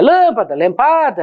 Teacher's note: ou elas são proparoxítonas, antepenúltima sílaba tônica